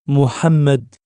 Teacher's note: au niveau du pharinx le rapprochement de la racine de la langue et de la parois faringale donne le H serré de l'arabe